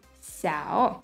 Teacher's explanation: The third tone is a dipping tone